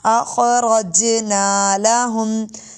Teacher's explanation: جیم پہ کلکلہ ہے، خا موٹے حروف میں سے